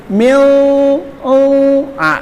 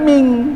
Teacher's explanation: Jadi mil, itu lebih dimasukkan ke hidung, bukan ming tapi mil.